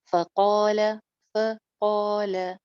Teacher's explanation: ल छोटा, फ छोटा, सेंटर में अलिफ मद्दा।